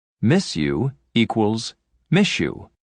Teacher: when a word ends with a s sound and the next word begins with y the combination of the two sounds changes to a sh sound